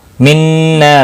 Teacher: نون مشدد ہے، غنہ کے ساتھ پڑھیں گے، اور الف مدہ بھی ہے، ایک الف کے برابر کھینچ کر پڑھیں گے